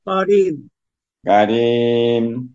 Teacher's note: কারিম এখানে তিন আলিফ টান হবে